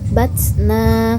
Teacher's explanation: Batsna tersebut ialah mad tabi'i atau mad asli, panjang 2 harokat atau 1 alif